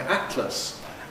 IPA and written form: ˈæʔtləs (atlas)